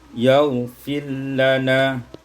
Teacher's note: idghamur ra fil lam, diidghamkan ra pada lam menjadi yaghfir lana.